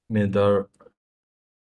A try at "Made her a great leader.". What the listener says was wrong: Can you try to make may longer? Made her a great leader.